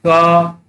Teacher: क वर्ग स्पर्श व्यंजन है और कंठ से स्पर्श होकर ये बाहर निकलता है